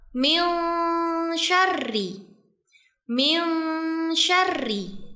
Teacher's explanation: huruf nun sukun yang bertemu dengan huruf syin dibaca dengan samar dan disertai dengung dua sampai 3 harakat. Jadi bacanya min syarri.